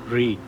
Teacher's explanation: It is a vocalic R, a rare phenomenon where the R sound itself becomes the holding vowel rather than a consonant. The tip of the tongue vibrates and curls back toward the roof of the mouth while the sound is being produced.